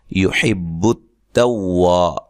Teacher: वाव को अदा करते दोनों होंठों को गोल करना है